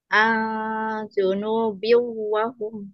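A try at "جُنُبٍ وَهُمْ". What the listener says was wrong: Nah, itu masih ang ya, tapi Junubi wa hum la yash'urun.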